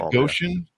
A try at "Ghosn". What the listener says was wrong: Actually, he pronounces it Ghosn, like a long sound, like rhymes with bone or phone. But I think in certain corners of the Middle East, it is pronounced the way you're suggesting. But in the automotive world, it's a long O sound, Ghosn.